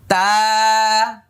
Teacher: মুখটা ফাঁকা হচ্ছে, এক আলিফ টান।